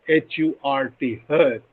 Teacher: this is a central unrounded vowel between half closed and half open